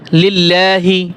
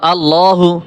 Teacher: লিল্লাহ লাম পাতলা হয়েছে। আবার আল্লাহু লাম মোটা হয়েছে।